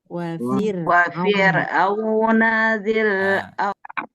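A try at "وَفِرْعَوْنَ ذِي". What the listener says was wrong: Ketika tadi baca, ro-nya itu jangan sampai mantul. Jangan sampai mantul ya, karena di huruf ro itu dia tidak mantul Ya, contoh gimana?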